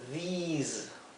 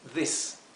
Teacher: quiero que se pronuncie como una I larga, these, ¿ok? Mientras que este es una I corta, this. Por eso aquí lo transcribí en verde con una I y aquí con dos Is.